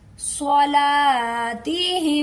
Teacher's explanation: हम अन सलातह अन को दरमियानी हलक से निकालेंगे स्वाद को पुर पढ़ेंगे लाम के साथ एक अलिफ भी है इसे एक हर्फ के बराबर खींच के अदा करेंगे